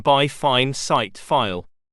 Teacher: This diphthong begins with an open vowel which is between the front and back position. It is quite similar to the vowel sound found in cut and sun.